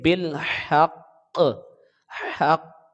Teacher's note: یہ قاف 2 مرتبہ پڑھیں گے، ایک بار ملاتے وقت اور پھر دوبارہ اس قاف کی آواز آئے گی، تب یہ 2 مرتبہ، صرف حرکت کی آواز نہیں آئے گی۔ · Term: تشدید